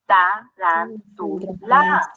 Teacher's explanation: nos damos cuenta que la sílaba tónica se encuentra en la antepenúltima sílaba